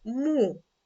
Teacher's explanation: ми чуємо приголосний твердий м і голосний звук у